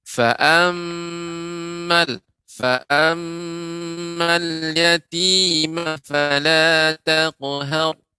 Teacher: mim bertasydid ini harus lebih dipanjangkan, ya. Karena di sini termasuk gunnah yang sempurna. Ya, gunnah yang kamilah.